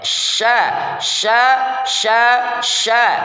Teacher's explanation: tengah lidah yaitu ada huruf syin syin cara bacanya Yang pertama angkat lidah tengah ke arah langit-langit keras tanpa menyentuh langit-langit itu